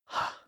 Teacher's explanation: here's the thing about that H sound H as I said it's really nothing more than a slight breath it's voiceless so the vocal folds are left open and silent and the sound isn't really articulated in any specific part of